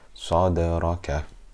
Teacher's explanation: I'm not pronouncing a fatha, dhamma or kasra on the Dal.